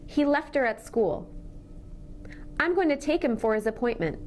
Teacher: we're linking final consonant sounds with pronouns that begin with H. As we link, we actually drop the H altogether.